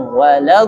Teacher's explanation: ada sifat yang namanya istitolah, suara yang memanjang. Wal. Nah, jadi ada suara ketahan walad.